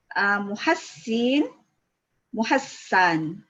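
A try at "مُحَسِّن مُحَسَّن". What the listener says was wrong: Jangan tarik banyak ni. Muhassin. Dia naik ya. Kita tarik sikit je.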